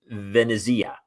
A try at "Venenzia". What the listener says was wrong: Venenzia. There's like an invisible N in her last name.